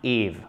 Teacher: Ne faites pas un H aspiré ici. C'est tentant quand on est francophone, lorsqu'un mot commence par une voyelle, de faire un H aspiré. Ce n'est pas le cas ici.